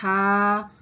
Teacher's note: ha, lidah bagian tengah yang terangkat mendekati langit-langit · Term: Central vowel, central vowel